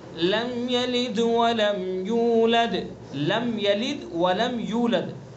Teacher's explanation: لم کے اندر اظہار ہوگا اور اظہار کو جلدی سے پڑھتے ہیں